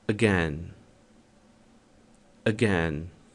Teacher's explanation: O primeiro A da palavra again. Muitas vezes ele é até imperceptível. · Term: schwa sound